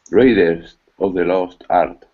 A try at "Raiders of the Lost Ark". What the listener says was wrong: One little thing. I don't say Raiders of. I say Zov. Raider Zov. Connect it. Raiders of.